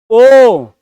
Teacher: अब देखिए, जब आप पढ़ते हैं ओ और औ, आप बोलते हैं ओ, अब ओठ सर्किल बनाया और क्या है, कंठ से आवाज निकली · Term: कंठोष्ठ